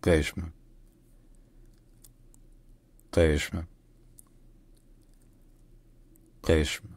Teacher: The Q sound is like a G sound, as in game, but deeper in the throat. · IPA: /ɢeʃm/